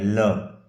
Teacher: पार्श्विक जिसे बगल का या पास का कहते हैं, जिस ध्वनि के उच्चारण में जिह्वा श्वास वायु के मार्ग में खड़ी हो जाती है और वायु इसके बगल से निकलती है उसे पार्श्विक व्यंजन कहते हैं। जीभ पूरी उल्टी होकर के हवा के सामने खड़ी हो जाती है और हवा जिह्वा के दोनों तरफ से निकल जाती है, ऐसा व्यंजन है ल। · ऐसा व्यंजन है ल ल का जब आप उच्चारण करेंगे तो जिव आपके ऊपर तालू को स्पर्श करके खड़ी हो जाएगी और अंदर से निकलने वाली वायु जो है जीवा के दोनों